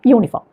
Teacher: അവിടെ ആദ്യം വന്ന അക്ഷരം U എന്ന സ്വരമല്ല, യാ എന്ന അക്ഷരമാണ് വന്നിരിക്കുന്നത് അല്ലേ.